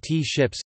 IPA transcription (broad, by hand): tʃɪps